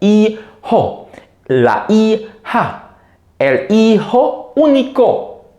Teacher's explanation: the J is aspirated, but the H is silent.